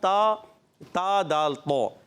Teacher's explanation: یہ زبان کا سرا اوپر کے دانتوں کی جڑوں سے تا دال تو ادا ہوتے ہیں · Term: تا کا مخرج